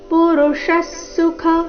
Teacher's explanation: ವಿಸರ್ಗದ ಅರ್ಧಸ ಮುಂದಿನ ಸುಖ ಒಟ್ಟಿಗೆ